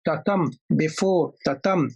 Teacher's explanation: Iamb is a 2-syllabic word, 2-syllabic foot. The first is unstressed, the first syllable is unstressed, the second syllable is stressed. So tatam. The second syllable should receive the stress, the accent.